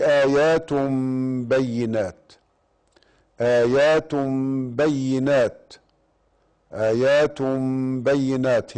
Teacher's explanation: هنا إقلاب، لماذا؟ لأنه تنوين وجاء بعد الباء، والباء من حروف الإقلاب. الإقلاب له حرف واحد وهو الباء فقط.